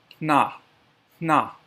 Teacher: For the HN sound, puff air out of your nose to make that sound, that HN sound.